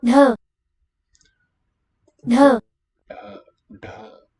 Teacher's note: That's the voiced aspirated retroflex.